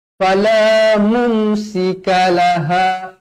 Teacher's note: mim mati bertemu sin, hukum dia dekat sini idhar syafawi, dibaca jelas dan terang.